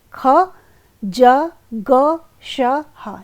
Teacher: दो उच्चारण अवयव इतने पास आ जाते हैं कि उनके बीच का मार्ग सकरा होकर वायु उनसे घर्षण करती निकलती है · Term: संघर्षी व्यंजन